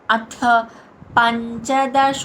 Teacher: ధ్యాయః యా తర్వాత విసర్గ ఉచ్చారణ హా కింద పలుకుతాం